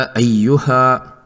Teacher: مد منفصل کو 4 حرکات کھینچا ہے